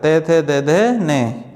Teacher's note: उच्चारण ऊपर के दांतों पर जीभ लगने से होता है